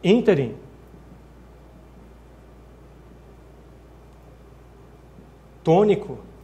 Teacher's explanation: são palavras cuja tônica é a antepenúltima sílaba. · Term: proparoxítonas